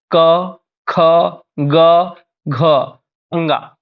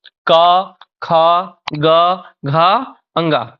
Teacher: अ, का वर्ग, हा और विसर्ग, इनके जो उच्चारण स्थान हैं वो हैं आपके कंठ